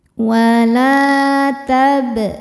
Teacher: Huruf ba sukun hukumnya adalah qalqalah sughra karena ba sukunnya sukun asli dan ada di tengah-tengah bacaannya. Maka ba ini dipantulkan dengan pantulan yang kecil